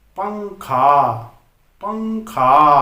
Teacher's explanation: यहां पर क वर्ग का पंचम वर्ण की ध्वनि निकल रही है, तो यहां पर लगेगा अनुस्वार, पंखा, यानी कि बिंदी लगानी है।